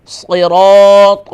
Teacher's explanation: صاد اور سین میں فرق کریں. صاد ہوگا فل ماؤتھ